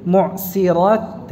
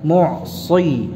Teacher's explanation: antara Shad dan Sin sama makhrajnya namun Bedanya apa Ya sifatnya sad tebal khususnya dalam keadaan ee berharakat kasrah semacam ini ini rawan Ya